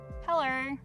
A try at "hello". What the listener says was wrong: No, that was wrong. Hello. There's actually no R in hello.